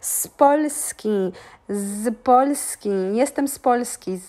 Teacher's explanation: The Z is so soft, it lies on the border of sounding like S letter.